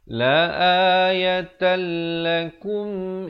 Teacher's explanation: Asalnya la ayatan, tapi bila datang lam masuk tanpa dengung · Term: idgham bila ghunnah